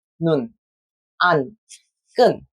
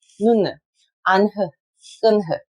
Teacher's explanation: That would be 눈, 안, 끈, and not 눈, 안흐, 끈흐. We do not make the full n sound, but end it without aspirating.